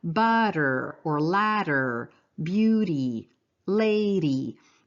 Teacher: it's termed a tap or flap and it's what we do when we say words like butter or ladder